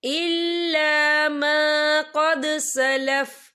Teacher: यहाँ दाल साकिन है तो यहाँ पर कलकला होगा · और आगे देखिए सलफ, यहाँ पे आपको छोटी सी तोई लिखी नजर आ रही है, तो ये फिर मतलब की अलामत है, तो यहाँ पे ठहरना बेहतर है। वफ की सूरत में फा जो है साकिन हो जाएगा